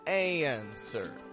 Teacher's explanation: it sounds like answer no W